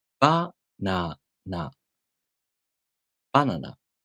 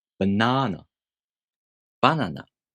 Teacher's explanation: The accent is on the first syllable. The pitch drops right after the accented syllable. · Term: pitch accent